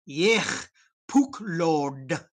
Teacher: Make sure to do the H with a nice raspy H and the D with the tip of your tongue up at the roof of your mouth.